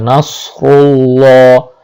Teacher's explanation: সদের উচ্চারণ সিনের মতো করলে হবে না। সদের উচ্চারণ যদি সদের মতো হয় তাহলে নাস বলার সাথে সাথে ঠোঁটটা একটু গোলাকার হয়ে যাবে।